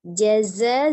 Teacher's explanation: Jadi bukan mad tabi'i lagi, menjadi mad wajib. Jaza, zanya panjangnya boleh 4, boleh 5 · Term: mad wajib muttasil